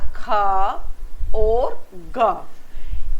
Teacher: कोमल तालू और जो जीभ का पिछला भाग है उसके बीच में संघर्ष होता है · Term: संघर्षी व्यंजन